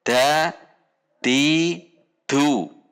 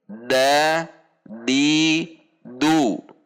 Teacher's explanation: Berarti saat berharokat dibaca terang, jelas, dibunyikan menekan pada titik makhraj dengan tidak mendorong udara. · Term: al-jahru